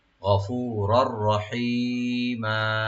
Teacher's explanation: without গুন্না এদগাম হবে দুইটা রার মধ্যে